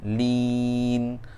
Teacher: lin tu berakhir dengan huruf nun, hujung lidah tekan ke langit-langit atas di sebelah hadapan